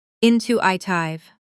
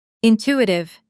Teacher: Now faster with the stress on the second syllable.